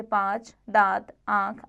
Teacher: जिस स्वर के उच्चारण में हवा मुख व नासिक दोनों से निकले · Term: अनुनासिक